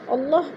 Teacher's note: اللہ پر پڑھا جائے گا کیونکہ اللہ سے پہلے لفظ قاف کے اوپر پیش ہے تو اللہ کو پر کر کے پڑھیں گے